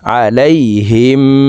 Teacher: আইন জবর আ লাম ইয়া জবর লাই হা মিম জের হিম এই হা তাসদিদওয়ালা মিমের সাথে গুন্নার সহিত পড়ব আলাইহিম মিম হামজা পেশ মু صاد জবর স দাল জবর দা